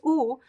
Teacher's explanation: the closed o is closer it's the oo sound so we start with O then open a little bit o